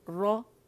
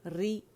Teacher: رو ری رو، این ار رو، این ار رو ری رو، ٹھیک ہے. رو موٹا ہے، رو موٹا ہے، اس میں تقریر بھی واضح ہے، ری باریک ہے، اس میں تقریر اتنی واضح نہیں ہوتی